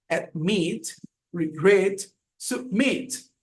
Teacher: La última sílaba está acentuada